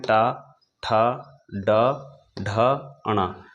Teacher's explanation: इन सभी वर्णों का उच्चारण स्थान मूर्धा होगा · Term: मूर्धन्य